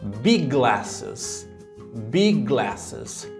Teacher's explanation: Então a gente tem lá o G do big e tem o G do glasses. A gente une big glasses